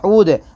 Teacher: واو ساکن سے پہلے یہاں پر پیش ہے، واو مدہ ہوگا، تھوڑا کھینچ کر پڑھیں گے